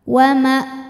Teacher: sebab huruf wau berharakat fathah panjang maka wau panjang dua harakat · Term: Mad Thobi'i muqaddar